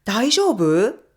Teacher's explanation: if you say it with a rising tone, like 大丈夫？, it becomes a question and means “Are you okay?” to ask about someone’s well-being.